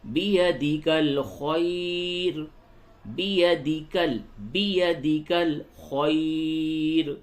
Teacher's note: یہ رائے موقوفہ سے قبل یا ساکن ہے، اس را کو باریک پڑھیں گے